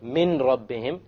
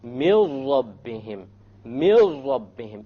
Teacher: So anytime you have a noon sakina followed by a lam, or you have a tanween followed by a lam, or a tanween followed by a ra, or a noon sakina followed by a ra, you drop the sound of n, and you merge what is before with what is after. · You drop the noon and you merge the meme with the ra. And you say, mil rabbihim, mil rabbihim, immediately. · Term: idgham without ghunna